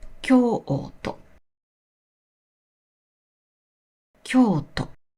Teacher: The u after the vowel o is pronounced as o. So Kyoto is actually pronounced as Kyo-o-to. Kyo-o and to all have the same length.